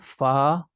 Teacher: आपके ऊपर वाले दांत का जो सिरा है वो आपके होठों में लग रहा होता है